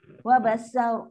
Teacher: Ra ni akan jadi ra yang tebal, tafkhim.